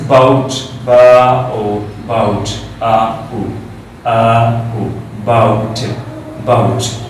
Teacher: There are two vowel sounds, okay? This is diphthong.